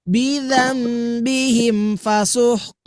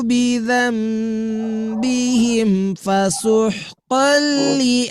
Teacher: karena idgam bila gunah maka tidak dapat ditahan terlalu lama